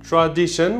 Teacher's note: Tradition, we hear 3 vowel sounds, a and e and the schwa. So 3 vowel sounds means 3 syllables.